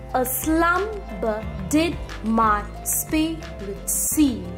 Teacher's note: unstressed stressed unstressed stressed unstressed stressed unstressed stressed this is the pattern of Rhythm in this particular line of poetry